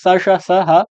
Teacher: इनको आपको बोला जाता है ऊष्मीय व्यंजन या फिर संघर्षी व्यंजन